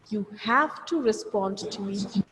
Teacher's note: So when I said have, I made a pause before that. You have to, a sudden pause, a quick pause.